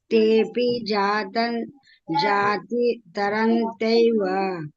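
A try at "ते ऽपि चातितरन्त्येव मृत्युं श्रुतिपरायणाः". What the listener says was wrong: ಜಾತಿ ಅಲ್ಲ ಚಾತಿ ಚತಿ ಚಾತಿ ತರಂ ಕೇವ ಶುತಿ ಪರಾಯಣ ದೀರ್ಘ ಇದೆ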